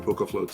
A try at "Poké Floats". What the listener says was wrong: Also, dude, it's Poke Floats. You have to pronounce the E like it's not Poke Floats.